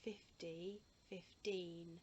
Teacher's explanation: And that's because my tongue goes up behind my teeth for the teen, so there's nothing sticking out. It's not like a f or a th that you can see the ending to.